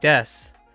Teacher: so it becomes des instead of desu